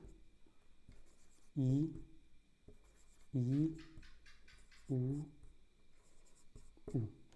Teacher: मुंह प्राय बंद रहता है या बहुत कम खुलता है